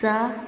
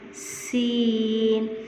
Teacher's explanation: اب زا میں نے شدت دی ہے اور سین کو میں نے نرمی سے پڑھا ہے